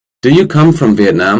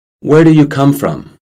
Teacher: We say them in different ways. We say the yes-no question with a rising intonation, but we say the WH question with a falling intonation.